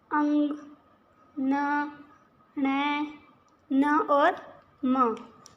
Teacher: के उच्चारण में हवा का प्रमुख वेग नासिक से निकलता है मतलब नाक से हवा का वेग निकलता है उसे नासिक व्यंजन कहते हैं